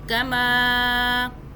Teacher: میم کو بھی کھینچا، آگے الف ہے اور اوپر چھوٹی مدہ ہے، تین الف کے برابر کھینچیں گے